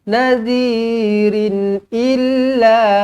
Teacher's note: So tanwin selari tak payah dengung, izhar halki.